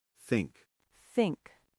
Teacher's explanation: For think, the fis sound is voiceless, like in three or bath. Your tongue should lightly touch your top teeth and air should flow over it. No vibration.